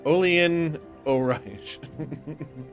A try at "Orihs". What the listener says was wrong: It would be HS, not. not SH. Ish.